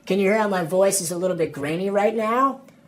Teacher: California accents in general are famous for vocal fry, which is the sound your voice makes when you kind of let it sit in your throat.